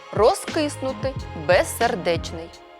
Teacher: у префіксах роз без перед глухим вимовляємо дзвінко розкиснути без сердечний у швидкому темпі мовлення кінцевий приголосний у префіксах роз без перед глухим вимовляємо глухо